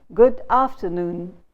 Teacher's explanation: I said it with a falling tone and a very glum tone.